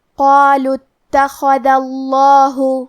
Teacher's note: آخری میں کیونکہ حرف دال پہ زبر ہے لہذا ہمیں لفظ الجلالہ مطلب کلمت اللہ کے لام کو موٹی آواز میں پڑھنا ہے